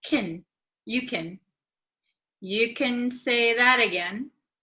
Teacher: for like Americans, usually like can gets very short.